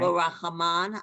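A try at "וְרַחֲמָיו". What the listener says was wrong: Okay, it's not a nun at the end. It's a vav. Can you see that it's short?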